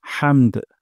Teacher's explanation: আর হা উচ্চারণ করব গলার মাঝখান থেকে।